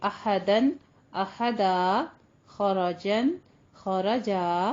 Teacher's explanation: एक जबर जो है उसको हम अलिफ मदा से तब्दील करके अदा करते हैं